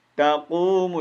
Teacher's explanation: یہ واو مد ہے، اس کو ایک الف مطابق کھینچیں گے